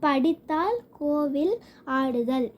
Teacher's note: தனிலகரம் நாக்கு மேல் அன்னத்தின் முன்புறம் தொடும்.